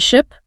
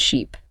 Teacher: the difference is in the length of the vowel and your tongue position